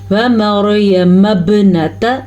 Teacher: واو کو لمبا نہیں کرنا، را کو پر پڑھنا ہے کیونکہ را ساکن ہے اور اس سے پہلے حرف پہ زبر ہے تو را پر پڑھی جائے گی۔